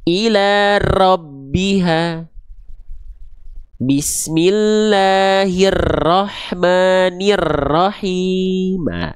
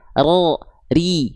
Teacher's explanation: Jadi getaran huruf ro itu dia sedikit tapi jelas. Tegas, lugas. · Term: takrir